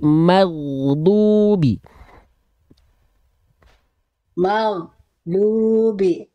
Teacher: Ghoin tidak punya sifat memantul, maka jangan maghe, tapi ghairil maghdu. · huruf Gin kan dilafalkan dari tenggorokan paling atas atau ujung tenggorokan dialirkan suaranya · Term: huruf ghoin